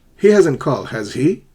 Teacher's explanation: Remember, the intonation is rising. It's going up.